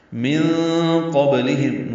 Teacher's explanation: نون ساکن کی بعد قاف آنے کی وجہ سے اخفا ہے، نون کی آواز چھپائیں گے، قاف پر پڑھیں گے، با ساکن پہ قلقلہ ہوگا، لام باریک پڑھا جائے گا، ہم میں میم ساکن پہ اظہار شفوی ہے، من قبلہم، ہم یہ قلقلہ نہ ہو، میم ہلے نہیں۔